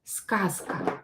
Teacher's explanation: Before voiceless consonant, so z is voiced, but because it is located near voiceless consonant, it will become voiceless too. I will pronounce it as S. Z will be pronounced as S.